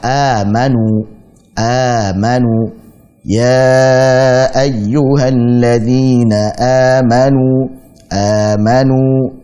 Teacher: Jadi bukan mad dulu baru hamzah sebagaimana jaiz munfasil dan silah tawilah, tapi ini hamzah dulu baru mad. Hamzah dulu baru mad. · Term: mad badal